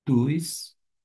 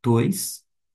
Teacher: eu falei tus, com U, mas é tois, porque nós temos um ditongo, ômega com iota, oi, tois, nesse sentido, vai ser justamente, neste caso, os.